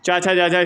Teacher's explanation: च, छ, ज स्पर्श संघर्षी कहलाती हैं।